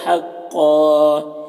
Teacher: हक कौफ उर्फ मुस्तालिया में से पुर पढ़ेंगे, यहाँ पर दो ज़बर है, वक्फ़ की सूरत में एक ज़बर के साथ अलिफ पढ़ेंगे।